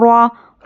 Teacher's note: را پر زبر ہو تو را کو پر پڑھنا ہے